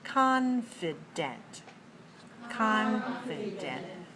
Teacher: Confident has 3 syllables, and it's stressed on the first